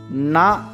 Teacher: நாவின் நுனி மேல்வாய் பல்லின் அடிப்பகுதியை தொடுவதால் பிறக்கிறது